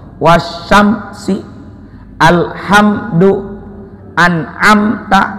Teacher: Satu lagi, apabila mim sukun bertemu dengan selain mim dan selain ba, pantangannya 2, mim dan ba, itu namanya izhar syafawi. Izhar itu jelas. Apa yang jelas? Mimnya. Syafawi di bibir.